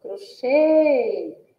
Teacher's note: A sílaba tônica aí é o che, que também possui um som fechado e que vai receber o acento circunflexo.